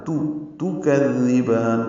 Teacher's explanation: زال کو نرمی سے پڑھیں گے، زبان کی نوک سامنے کے دانتوں کے اندرونی کناروں سے لگائیں گے